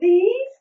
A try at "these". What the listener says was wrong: Oh, where's your sound? Do your sound. Where's your TH sound? These.